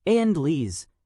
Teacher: occasionally the second syllable has been slurred so that the word is pronounced Andles, handles without the H.